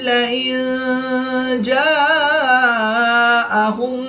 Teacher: نون ساکن کے بعد جیم حروف اخفا میں سے ہے تو یہاں پر اخفا ہوگا، یعنی غنہ زمانی کر کے پڑھیں گے